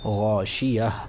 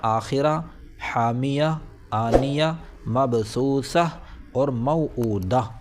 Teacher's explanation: یہ گول تا ہا سے بدل جائے گی اور حرف ساکن کی طرح پڑھی جائے گی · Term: وقف بالابدال